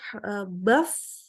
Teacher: Jadi itu baf, ada udaranya dan dia lunak, terus mengalir suaranya, ya, suaranya terus mengalir. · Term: rohwah